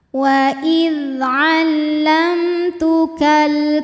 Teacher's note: izhar atau jelas waidzamtukal berikutnya ada hukum alif lam qamariah sebab alif lam menghadapi huruf q yaitu huruf Kaf cara bacanya lam dibunyikan dengan izhar atau jelas waidamtukal ta hukumnya Mad Thobi'i muqaddar sebab ta berharakat fathah berdiri · ta berharakat fathah berdiri cara bacanya panjang dua harakat